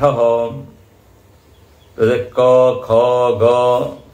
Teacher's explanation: क ख ग यह कंठ इनका उच्चारण स्थान है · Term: कंठ वर्ण